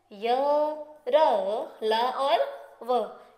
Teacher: इन व्यंजनों का उच्चारण जीभ, तालू, दांत और होठों को सटाने से होता है और इनके उच्चारण में श्वास का अवरोध बहुत कम होता है, इनकी सांस की रुकावट बहुत ही कम होती है और इनकी संख्या कुल 4 है, य, र, ल और व। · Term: अंतस्थ व्यंजन